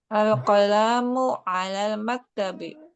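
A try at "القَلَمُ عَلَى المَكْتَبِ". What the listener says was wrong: Konya nggak panjang karena tidak ada alif di sana.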